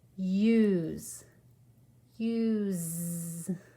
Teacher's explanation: of that silent e that makes the u say u and it makes the s sound like a z